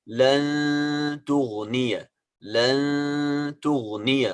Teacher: part of the sound is coming from the nose and the other part is coming out from the mouth